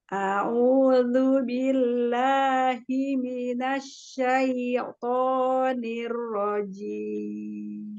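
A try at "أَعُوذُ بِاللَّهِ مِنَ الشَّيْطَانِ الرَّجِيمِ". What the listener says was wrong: Iya, tapi jangan terjeda ya. Jangan syaito, nggak boleh dijeda. Coba lagi.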